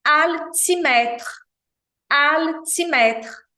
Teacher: o l em francês jamais tem som de u